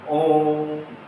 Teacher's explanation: इस ओ का उच्चारण हमें लगभग तीन गुना समय तक करना है